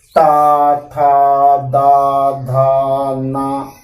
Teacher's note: तो अब जीभ जो होगी आपकी दांत में आकर के टकराएगी तो वो दंती वर्ण हो गए।